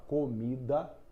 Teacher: na palavra comida, mi é a sílaba tônica. Co e o dá são átomas.